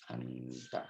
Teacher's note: Anta ya diringankan karena dia huruf istifal bukan isti'la.